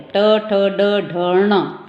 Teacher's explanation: जब हम इसको बोलते हैं हमारी जीभ क्या है, मुड़ती है, वो हमारी मूर्धा से टकराती है। ट ठ ड ढ ण, ट उल्टी होती है हमारी जीभ। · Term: मूर्धन्य